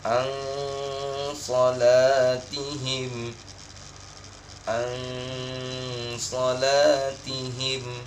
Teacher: Jadi ada dengung, walaupun samar bacanya, agak eng dia. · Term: ikhfa